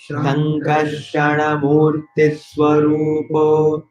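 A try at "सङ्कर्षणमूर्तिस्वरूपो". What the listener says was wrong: I'm hearing a little bit of a Shankarshana.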